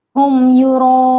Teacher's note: इस मद को हमें चार अलिफ के बराबर खींच कर पढ़ना है, कितनी, चार अलिफ के बराबर।